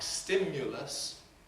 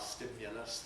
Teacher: Even odder in RP is the U that you get in words like stimulus, rather than a schwa